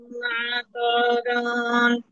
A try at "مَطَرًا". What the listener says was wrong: মাতো টান নাই আপু, মাতরন।